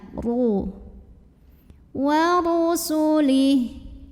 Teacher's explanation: Huruf ra-nya dibunyikan secara tafkhim karena ra-nya ini berbaris dhammah. Maka ra-nya ini dibaca dengan tebal. Pangkal lidah kita naikkan.